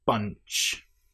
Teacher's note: we have the Nasal sound followed by the ch.